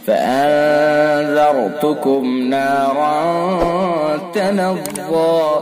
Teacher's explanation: فانذرتکم نارا تلظى، نون ساکن کے بعد اخفا کے 15 حرفوں میں سے ذال لہذا اخفا ہوگا، اخفا حقیقی، غننے کے ساتھ پڑھیں گے، خیشوم سے نکال کر کے پڑھیں گے